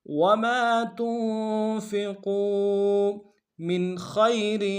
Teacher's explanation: تنفقوا من خیر، میم کو نون ساکن کے سامنے لانا ہے، نون ساکن یہاں پہ اظہار ہوگا کیونکہ آگے خا رہا ہے